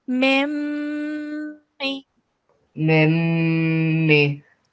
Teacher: it's called a gunna sound, and we do it for 2 seconds when there's a meme mushaddad